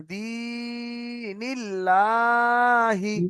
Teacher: ইয়া মাদ্দার পড়াকে একালি পরিমাণ টান দিয়ে পড়তে হয়।